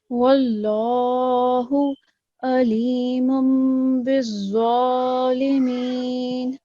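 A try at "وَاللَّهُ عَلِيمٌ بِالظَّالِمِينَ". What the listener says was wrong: But again, in the second word, we have the letter ain, and it has a prominent sound, right? It comes from the middle of the throat. Alimum.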